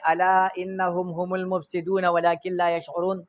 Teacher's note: دې کې حمزه د مری د اخر نه ده، بیا په زبر دی نو خوله به کولو شي